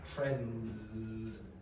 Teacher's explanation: Now notice, this is elision. This is an example where an English speaker will probably not pronounce the D. So they'll say trends, instead of trends.